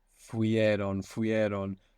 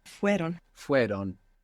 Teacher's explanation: So the I, the E sound, falls away.